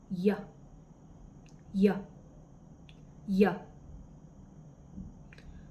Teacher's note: At sa malapatinig naman na pangalangala sa punto ng artikulasyon, may letrang Y.